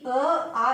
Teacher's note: अ, आ इसका उच्चारण कहाँ से होता है? कंठ से होता है